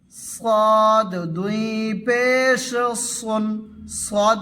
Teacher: জিহুবার গোড়া উপরের তালুর দিকে উঠাবে তাহলে সদ হরফটি পুর হয়ে যাবে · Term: মোটা হরফ